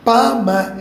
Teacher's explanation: ப ம என்ற இரண்டு எழுத்துக்களும் உதடுகள் ஒட்டினால்தான் பிறக்கும் இதழ் இயைந்து பிறக்கும் பகர மகாரம் என்று சொல்கிறார் கீழ் இதழும் மேல் பல்லும்